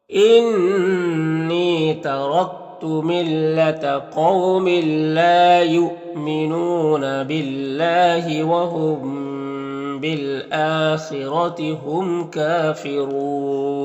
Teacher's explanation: حمزہ میں کھڑا زبر ہے، ایک الف کے برابر کھینچیں گے. خا حروف مستعلیہ میں سے پر پڑھیں گے، را کو پر زبر را کو پر پڑھیں گے. یہاں پر میم اظہار شفوی ہوگا، اس کو ظاہر کر کے جلد پڑھیں گے.